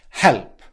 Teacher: She makes a small plosive release on the word help.